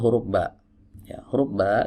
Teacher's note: belajar berikutnya kita masuk ke huruf ba huruf ba Ini adalah huruf yang keluar dari dua bibir ya yang dipertemukan sama seperti huruf B di dalam bahasa Indonesia tapi hati-hati sebagian